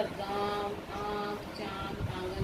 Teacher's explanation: आगे अनुस्वार, जिसका उच्चारण नाक से होता है और उसे इसका प्रयोग पंचम वर्ण के स्थान पर किया जाता है। इनका उच्चारण नाक और गले से होता है